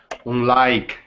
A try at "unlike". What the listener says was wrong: So not un. I'm hearing like unlike. I want it to sound like this. Unlike. Unlike.